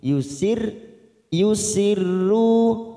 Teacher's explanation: huruf ro yang bertasdid kita baca tarkik